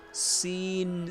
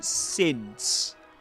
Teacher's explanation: Seen is pronounced with a long e sound, but since with a short e sound.